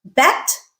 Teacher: in the word bet the eh is followed by an unvoiced consonant and therefore it is it has that flat um Quality to